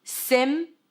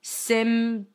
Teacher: Well, there is a P there, but you don't have to pronounce it. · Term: silent P